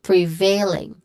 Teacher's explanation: The stressed syllable here is the second syllable veil. So we say it as prevailing.